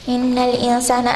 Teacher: Noon al mushaddada, this is going to be ghunna, so you have to make it come from your nose